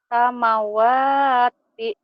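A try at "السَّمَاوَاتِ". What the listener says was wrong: Bukan. Bukan. Kan ini ada patah berdiri nih, panjang. Ini panjang.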